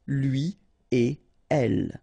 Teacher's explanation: So no links after et. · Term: no liaison